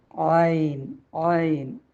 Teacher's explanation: നാവിനെ ഉള്ളിലോട്ട് വരച്ചു പിടിച്ച് ആ സമയത്ത് നമ്മളുടെ തൊണ്ട കുറച്ച് ഓപ്പൺ ആകും അങ്ങനെയാണ് നമ്മൾ ആനിനെ ഉച്ചരിക്കേണ്ടത് അടുത്ത അക്ഷരം തൊണ്ടയുടെ അക്ഷരം തന്നെയാണ് പക്ഷേ അത് · ഈ ഐന് തൊണ്ടയുടെ മധ്യഭാഗത്തുനിന്നാണ് ഐന് പുറപ്പെടുന്നത് · ആയിന് ലൈറ്റ് ലെറ്ററാണ്. പക്ഷെ ആയിനെ നമ്മൾ ഉച്ചരിക്കുന്ന സമയത്ത് നാവിനെ കുറച്ച് ബാക്കോട്ട്, നാവിനെ ഉള്ളിലോട്ട് കുറച്ച് വലിച്ചു പിടിച്ചിട്ടാണ്